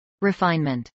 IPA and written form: ɹəˈfaɪnmənt (refinement)